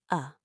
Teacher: It is the lazy vowel, it sounds like a tiny grunt. Uh, when a vowel is not stressed, it often turns into awah. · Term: schwah